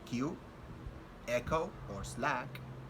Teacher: K, which is a voiceless velar stop